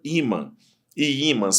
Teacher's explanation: Só que imã não termina com A, é um som nasal. Então ela não é terminada em A, ela é terminada em AN.